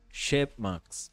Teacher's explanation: O som mais forte é no início.